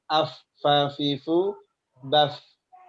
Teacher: kalau makhraj huruf fa itu asyafatan dari 2 bibir